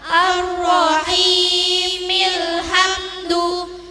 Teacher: Jika diwasolkan dibaca Ar-Rahimil hamdu. Mim kasroh masuk kepada lam sukun dan hamzah waswal tidak berbunyi